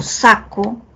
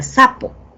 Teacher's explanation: en la primera palabra es un oclusivo velar, en la siguiente, en sapo, tengo un oclusivo bilabial